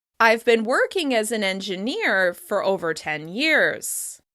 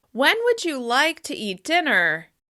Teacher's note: After each thought group, you can hear a slight rise in pitch and a very brief pause to package these words together.